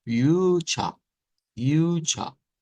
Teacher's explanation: sonar más como una A media centralizada